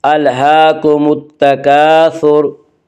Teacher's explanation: अलहाकुमुत तकासुर, हा के ऊपर खड़ा ज़बर है। खड़ा ज़बर को एक अलिफ के बराबर खींच कर पढ़ेंगे · अलिफ लाम अगर हरूफ शमसी के शुरू में हो तो अलिफ और लाम को न पढ़ेंगे बल्कि बाद वाले हरफ से मिलाकर पढ़ेंगे